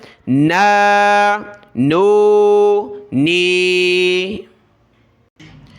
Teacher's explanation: اس میں ناک میں آواز پیدا نہیں کرنی